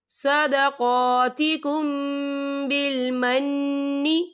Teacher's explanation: آمنوا لا تبطلوا صدقاتکم بالمن، یا دیکھیں صدقاتکم، یہاں میم ساکن ہے اور میم ساکن کے بعد جو ہے با آ رہا ہے، تو یہاں پر اقفا شفوی ہوگا، تو ہم یہاں غنہ بھی کریں گے